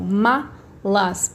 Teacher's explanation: e as malas mala aqui vocês repararem quando eu falo malas a minha sílaba mais forte não é a última é a penúltima